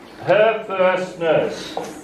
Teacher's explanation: It is not /ĕ/ and the consonant /r/ sound, you don’t have to pronounce the /r/.